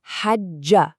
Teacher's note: We press and hold the G sound, and then we release it with that a vowel, ja. Okay, now let's put it all together.